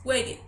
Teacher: wait termina en T. Entonces agregamos la ed y la E suena como una I.